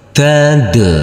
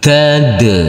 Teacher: untuk huruf Qalqalah yaitu huruf Dal yang bersukun ini harus kita pantulkan